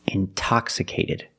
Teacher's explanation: We have the stress after the NT. We pronounce the T like a pure T. T. Release the sound.